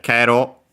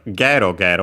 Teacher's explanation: Notice the difference between the Kero, usually found at the end of his speech, here we have gero gero with the voiced consonant.